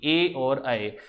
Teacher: कंठ और तालु, इन दोनों की योग से ध्वनि निकली थी, इसका नाम था कंठ तालव्य ध्वनि